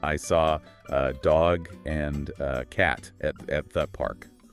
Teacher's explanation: You can almost hear that rhythmic engine running, demanding that uh and thuh pass by quickly to allow the major syllables to strike the beat.